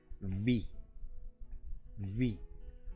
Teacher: no la hacemos pegando los labios, la hacemos mordiéndonos el labio inferior, con la hilera de dientes superiores, con los incisivos haciendo contacto con los labios inferiores.